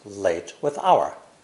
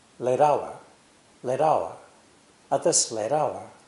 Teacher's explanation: Americans pronounce the T between vowels more quickly, closer to a D sound. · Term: flap T sound